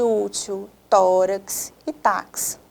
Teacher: a penúltima é uma sílaba mais forte a sílaba tônica por isso é uma paroxítona